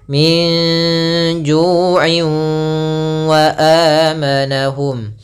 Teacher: wau idgam biguna juga kita bisa namakan dengan idgam idgam naqis yang tidak secara utuh diidgamkannya masih ada sedikit menyisikan suara nunnya